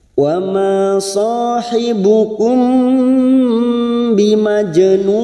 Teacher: Biasanya mim sukun kita baca jelas. Nah, karena di sini mim sukun bertemu ba maka kita dengungkan selama 3 harokat namanya bacaan ikhfa safawi